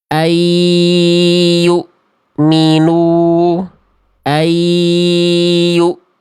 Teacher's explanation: dileburkan nunnya atau konsonan n-nya tapi tanpa disertai dengan dengung